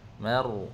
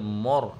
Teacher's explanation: Mar, ra takrir, ada takrir, ada getaran. Mar, bukan mor, mar, ya ma nipis, ra tu tebal.